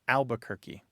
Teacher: that first R just poof poof goes away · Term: dissimilation